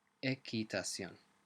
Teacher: the QU sound is not a qu sound like in English, it's a hard k sound